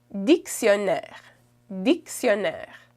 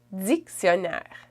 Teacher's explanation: And in Quebec, you say dictionnaire. So you kind of add like a Z after the D.